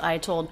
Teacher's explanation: Right from the I diphthong into the T sound, no break.